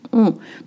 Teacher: If you hear an N or M, your brain is tricking you. I don't have any N or M sound. On. To make the sound on, let's start with O.